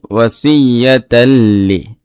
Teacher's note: এখানে তানবিন রয়েছে, এইটাকে তানবিনের পরে লাম আসে ইদগামে বেলা গুন্না হয়েছে, মানে গুন্না সারা মিলাই পড়ব